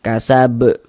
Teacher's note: huruf ba ini kan kedudukannya menjadi sukun sebab kita sukunkan, maka dia mantul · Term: qalqalah kubro